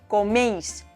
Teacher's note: coméis tiene un diptongo porque ei forma una sílaba